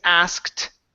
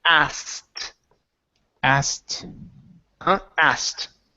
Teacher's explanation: we do not pronounce the k so instead of saying asked okay it turns into asked asked